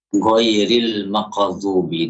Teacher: Bahkan sebagian lagi ada lahjahnya itu mengganti ghain dengan g.